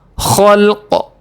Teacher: وقفہ کرنے کی صورت میں قاف پر جزمہ لگا کر قلقلہ ہوگا